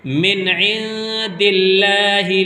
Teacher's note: اللہ کا لام باریک ہوگا